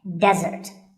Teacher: here the stress is on the first syllable which is de